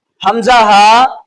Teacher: ان میں سے پہلا مخرج حمزہ ہا، یہ ادا ہوتے ہیں حلق کے اس حصہ سے جو سینے کی طرف والا ہے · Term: حروف حلقی